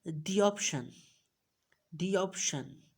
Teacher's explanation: we will uh pronounce a little y sound in it